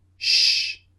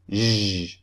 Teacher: What's easy is if you have one of these sounds in your language, for example, sh, then simply just keep the same shape and use your voice to produce zh